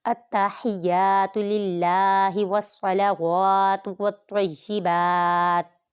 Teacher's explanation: अल्लाह के लाम से पहले ज़ेर है, अल्लाह के लाम को बारीक पढ़ेंगे